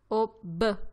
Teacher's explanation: si ottengono con la chiusura delle labbra